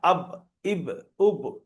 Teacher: দুটো ঠোঁটের শুকনো অংশ মিলিত হয়ে উচ্চারণ হয় বা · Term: বায়ের মাখরাজ